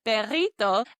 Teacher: And I knew that this had a double R in the word. So I pronounced it as that trilled rolled R sound